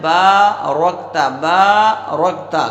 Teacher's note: بارکتا، تو با پر الف ہے، ایک الف کے برابر کھینچیں گے، را پر زبر ہے، را کو پر کریں گے، کاف ساکن ہے تو کاف را کے ساتھ ملا کر ادا کیا جائے گا، تا پر زبر ہے تو تا بھی بغیر کھینچے پڑھا جائے گا۔